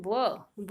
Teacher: व जब हम बोलते हैं तो हमारे नीचे के ओठ ऊपर के दांतों को छू रहे हैं, नीचे का एक ओठ ऊपर के दांतों को छू रहे हैं, इसलिए इसका उच्चारण, एक ही वर्ण ऐसा है वर्णमाला में जिसका उच्चारण स्थान दंतोष्ठ है, यानी दांत और ओठ, ऊपर के दांत नीचे का ओठ, दंतोष्ठ, और वह वर्ण है व, अंतस्थ वर्ण।